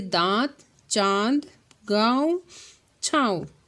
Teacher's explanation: अनुनासिक में नाक और मुख दोनों से निकलती है